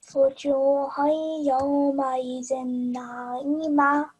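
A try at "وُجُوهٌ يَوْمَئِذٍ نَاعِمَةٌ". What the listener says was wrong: Okay, na'imah. Make sure to pronounce the ha sound as well, okay?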